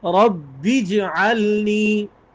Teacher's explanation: جیم پر قلقلہ بھی کرنا ہے